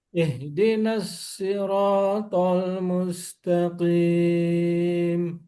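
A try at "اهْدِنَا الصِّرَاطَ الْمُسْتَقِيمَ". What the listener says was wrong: jangan ditarik ke atas sinnya tetap ihdinas.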